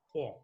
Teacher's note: প হচ্ছে অঘোষ অল্প প্রাণ ধ্বনি